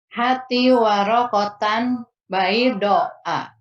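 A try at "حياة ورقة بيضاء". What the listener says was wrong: Nah, salah yo. Intonasinya balik. Ulang lagi. Salah. Hati warokotan baydoa. Hati warokotan baydoa.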